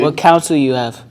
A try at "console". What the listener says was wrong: Oh, console. You said counsel, and like your guidance counselor.